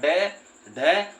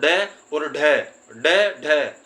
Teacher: इनके उच्चारण में हमारी जीभ एकदम ऊपर, यहाँ पीछे मूर्धा में छूकर वापस नीचे को गिरने लगती है, इसलिए इसको बोलते हैं उत्क्षिप्त व्यंजन।